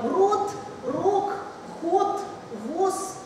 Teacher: на глухой в транскрипции они все кончаются на глухой потому что в польском языке как и в русском языке заметьте происходит оглушение